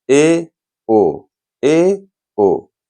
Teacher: अर्धसंवृत मतलब आधा मुख बंद रहे। ए ओ, ए ओ, ये हो गए अर्धसंवृत, इनकी संख्या 2।